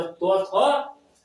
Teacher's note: दांत के जड़ में जीभ सटता है